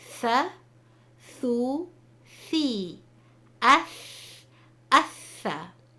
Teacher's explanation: There are 3 letters that are articulated when the top of the tip of the tongue touches the bottom edges of the top 2 incisors. You will notice for these letters, part of the tongue will stick out.